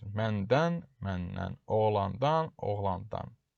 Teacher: dan-dən çıxışlı qal şəkilçisi nan kimi tələffüz edilir